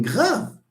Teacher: r is voiced because it occurs before g, which is also voiced. G is voiced, so this is voiced.